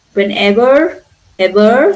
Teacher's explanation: I'm pronouncing R because the next one is a vowel.